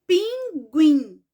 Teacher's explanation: o fim justamente Então essa palavra ela é oxítona por quê Porque a sílaba mais forte é a última